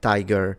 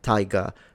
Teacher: some that would say tiger and some that would say tiger and the first one being rotic the second one being non-rotic